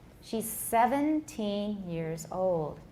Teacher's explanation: If you say years old, then they both get stressed.